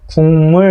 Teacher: 그 기역을 같은 라인에 있는 이응으로 끌어내려온다는 거예요. 그러니까 이게 비음이 아니었던 게 비음으로 바뀌어서 똑같이 비음이 돼버렸기 때문에 동화현상이다. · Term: 비음화